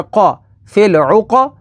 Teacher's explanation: قاف حروف مستعلیہ میں سے ہے تو اسے پر یعنی موٹا پڑھیں گے